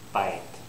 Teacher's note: I didn't have a y I said bot should actually be bite